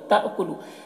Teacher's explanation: یہاں پر حمزہ ساکنہ ہے، جھٹکا لگے گا۔